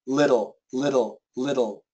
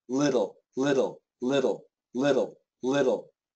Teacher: language but not in English not in English um it's uh the flap T is similar to a d